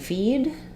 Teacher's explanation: in feed this one is going to be the longest because it's followed by uh voiced D